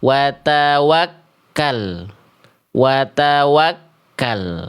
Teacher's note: huruf ta itu tidak dilafalkan menjulur ujung lidahnya